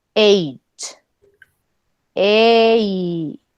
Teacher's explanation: Tenemos la EI. Entonces primero hacen la E y luego hacen la I